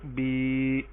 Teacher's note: یا ساکن اس سے پہلے زیر تو ہم اس کو ایک الف کے برابر لمبا کریں گے. بازیر یا بی. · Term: یائے مدہ